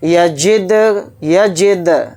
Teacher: دال کے اوپر جزم ہے تو دال کے اندر قلقلہ کر کے پڑھیں گے، کیونکہ دال حروف قلقلہ میں سے ایک حرف ہے.